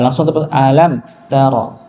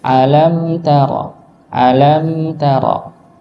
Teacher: huruf mim di sini punya sifat yang dia sedikit mengalir